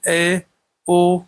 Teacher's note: होता है अर्ध समृत होता है अर्ध समृत क्या होता है जिन स्वरों के उच्चारण में मुख द्वार आधा बंद रहता है